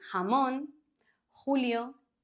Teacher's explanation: the J is pronounced like the H in the English word hot but often stronger